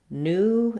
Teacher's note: In American English, we have the oo sound. British English uses the new sound.